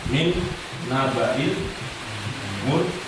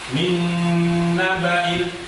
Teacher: Di sini ada nun sukun bertemu dengan huruf nun, maka dengungnya ini dengung yang sangat dalam.